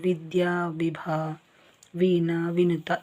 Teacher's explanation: ನಿಮ್ಮ ಕೆಳ ತುಟಿಯು ಮೇಲಿನ ಹಲ್ಲಿನ ಹತ್ರ ಬರುತ್ತೆ ಆದರೆ ಎರಡು ತುಟಿಗಳು ಸೇರುವುದಿಲ್ಲ